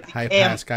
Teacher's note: Emphasis on second syllable.